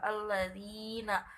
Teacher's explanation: Allazina, zi-nya itu mat tabi'i, panjangnya 2 harakat atau 1 alif.